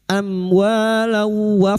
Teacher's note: fathah bertemu alif dua harakat mad thabi'i · Sekarang di sini kita wasal atau terus kita uraikan pada kalimat amwalau am mim sukun bertemu wau idhar syafawi. Mim sukun dibaca jelas tanpa mendengung.